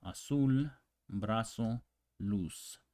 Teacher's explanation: this Z doesn't exist really the sound it's just the same as the S as in cell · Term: the Z in Spanish